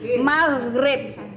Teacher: Jadi ghain ini di tengah-tengah tenggorokan.